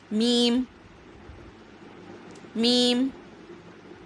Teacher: بند ہونٹوں کے خشک حصے سے ادا ہوگا